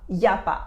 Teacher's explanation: Again, we take the normal sentence of il n'y a pas, there isn't. We remove the ne, it becomes il y a pas, and when we say it, it becomes y a pas. Yapa. And this is very useful to know when you want to improve your listening skills of French, because we speak really fast.